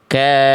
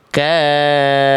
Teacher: Ada penekanan di fa, jadi ada nabar di fa-nya. Lebih naik nada f-nya itu ya